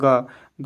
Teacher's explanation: ग ग जब बोलिएगा तो ये कंठ से निकलता है। क के जितने भी कवर्ग जो है वो कंठ से बोले जाते हैं।